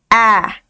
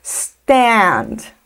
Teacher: Eu costumo dizer que é um A que fica entre o nosso A do português e o nosso E do português. Então, se a gente fosse colocar um som no meio do caminho, ficaria mais ou menos A. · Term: A bem aberto